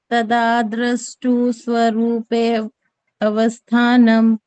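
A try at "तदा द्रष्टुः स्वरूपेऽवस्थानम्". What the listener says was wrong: गलत बोल ग ना ए भी बोल दिया अ भी बोल दिया दोनों गलत हो गए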